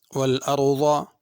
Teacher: ضاد پر پڑھنی ہے، ضا یا ذال نہیں پڑھنی